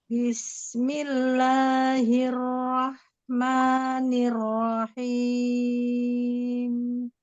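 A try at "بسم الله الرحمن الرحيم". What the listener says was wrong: Bismillahirrahman lamnya mau lebih ringan.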